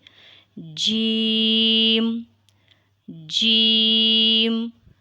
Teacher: it is pronounced from the middle of the tongue and roof of the top of mouth